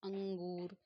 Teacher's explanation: तो हम इस प्रकार के अंग को बोलने के लिए नाक का प्रयोग करते हैं, नासिका का प्रयोग करते हैं। तो इसका अनुस्वार है, बिंदी लगा हुआ है, अनुस्वार हुआ है, म को न को अनुस्वार हो जाता है।